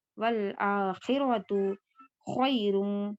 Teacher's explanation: اب دیکھیں یہاں پر ہم دو طریقے سے پڑھ سکتے ہیں ایک ایسے را دو پیش رن خیرون بھی پڑھ سکتے ہیں اور دوسرا یہ کہ را کو ہم واو میں ملا بھی سکتے ہیں یعنی ادغام کریں گے اسے